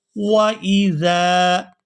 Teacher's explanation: زال کو نرمی کے ساتھ ادا کریں گے اور کھینچ کر ادا کریں گے کیونکہ اس کے بعد الف مدہ ہے